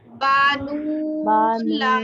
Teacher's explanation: फर्क ये है कि बा को नहीं खींचना, नून लाम को खींचना है।